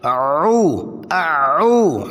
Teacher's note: عین وسط حلق سے، اور عین کے بعد واو مدہ